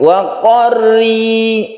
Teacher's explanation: Kemudian rok kalau berkasro ini tipis, tarqiqan. Wa qarri, ri tipis, bibir kita ke bawah